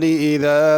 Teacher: اذا میں ذال ہے، اس کو زا نہیں پڑھنا